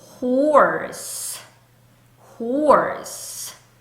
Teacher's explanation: 유지가 안 되고 성대는 울리지 않죠. 그러니까 유지되지 않는 세는 소리 H입니다. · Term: H의 소리